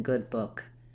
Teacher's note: Let's look at how to pronounce vowel uh as in good book. It's a high back rounded lax vowel. · It's a high back, rounded, lax vowel, and the symbol for it is this uppercase U with the little extra symbols on the top. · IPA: /ʊ/